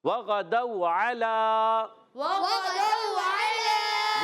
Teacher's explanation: لام پر کھڑا زبر ہے، اس کو ایک الف کھینچیں گے، عین کو نہیں کھینچنا، لام کو کھینچنا ہے